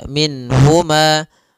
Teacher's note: Nun di sini harus jelas karena bertemu dengan huruf ha maka tidak boleh ditahan misalnya ditambah dengan gunna minhumaah ini enggak boleh atau ditahan suaranya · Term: izhar halqi, izhar